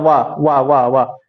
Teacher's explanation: वाह वाह वाह वाह, ये वाला बोलता है, ऊपर वाला दांत बोलता है ना। नीचे वाला ओठ जाता है ऊपर वाले दांत के पास